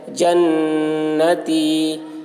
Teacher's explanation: نون کے اوپر تشدید ہے، اس لیے نون کی آواز کو ناک میں لے جا کر ایک الف کی مقدار کھینچیں گے، اس کو غنہ کہتے ہیں۔ جنتی، یا ساکن سے پہلے زیر ہے، یا مدہ ہوا، اس لیے یا مدہ کو ایک الف کے برابر کھینچ کر پڑھیں گے۔